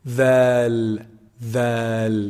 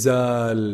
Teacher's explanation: It's the tip of the tongue when it hits the lower edge of the upper incisors. So the edge of the upper incisors, they hit the tip of the tongue.